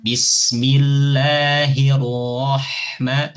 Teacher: Nah, jadi ketika masuk ke huruf ro, ini langsung tebalkan Bu.